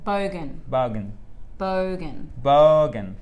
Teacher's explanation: c'est vraiment la grosse intonation sur la première syllabe et ça fait comme ça